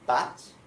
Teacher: if I say bat and I say the B correctly, I can feel it. I can feel it in my voice box. It's vibrating. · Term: voiced